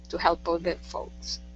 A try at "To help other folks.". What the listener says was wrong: Other instead of older. Other. To help other folks.